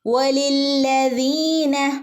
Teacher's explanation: കനപ്പിച്ച് ഓതണം. പിന്നെ നമ്മൾ പ്രത്യേകം ശ്രദ്ധിക്കാനുള്ളത് വാവിനെ ചുണ്ട് കൂർപ്പിച്ചിട്ട് വേണം പറയാനായിട്ട്. ചുണ്ട് കൂർപ്പിച്ച് പറയണം.